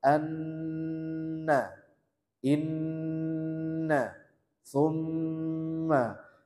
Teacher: Jadi nun dan mim yang bertasydid ini adalah gunnah yang paling sempurna. Maka dia ditahan yang lama